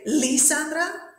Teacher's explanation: We say Lisandra, so the stress is in the middle.